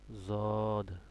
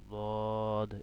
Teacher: এখানে কিন্তু কি জ দেওয়া, হ্যাঁ, অন্ত্যেষ্টিয় জ দেওয়া। তো এটা জদ, জদ হবে না, দদ, একটু নরম হবে